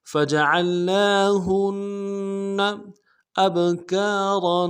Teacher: حمزہ کو با کے ساتھ ملائیں گے، با جزم ہو تو قلقلہ ہوگا، قلقلہ کریں گے۔